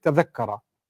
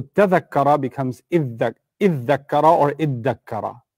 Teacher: ta and dha are from the same part of the tongue. Your tongue moves to the front of the mouth when you pronounce them. And what happens is there's a fusion. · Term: idgham